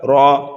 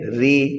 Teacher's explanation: را کے اوپر زبر یا پیش ہو تو را کو پر پڑھنا ہے، اور را کے نیچے زیر ہو تو را کو باریک پڑھنا ہے